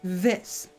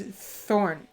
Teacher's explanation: the th in this for me at least it vibrates more whereas the th in the thorn is more breathy so so fits this so thorn has more tongue but this